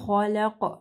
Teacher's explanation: پھر قاف کو جو ہے موٹا پڑھنا ہے، اور قاف کے اوپر وقف ہوگا تو قاف جو ہے یہاں پہ کلکلا ہوگا